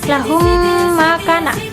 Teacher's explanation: Jadi mimnya itu mim mati apabila ada mim mati bertemu dengan mim hidup. Tuh, jadi jatuhnya kayak bertasydid tapi dia tetap hukumnya hukum mim matinya gitu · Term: idgham mimi